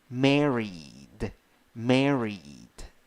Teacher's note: the stressed syllable is the first syllable